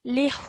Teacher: Yes, normally, yes, you would end it, you would say this for 2 seconds, but because after this, we are stopping at the end of the verse, we can stretch the hu sound out for about 2 to 6 seconds